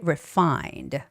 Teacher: the stress is on fine. Okay, refined, not on the RE part. So do not stress the prefix.